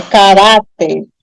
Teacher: i a próxima palavra caráter tenho três sílabas aí né mas como eu pronuncio caráter a sílaba mais forte é a penúltima e não a última não é caracter é caráter aí eu tenho uma paroxítona terminada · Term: sílaba tônica